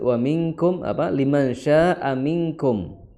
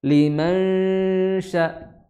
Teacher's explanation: jangan langsung menuju ke sifat huruf shin ya, tapi dimunculkan sifatnya istifal